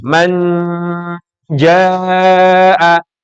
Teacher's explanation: Nun bertemu jim jim masuk salah satu huruf ikhfa dia pasti bacaannya melibatkan hidung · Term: bacaan Ikhfa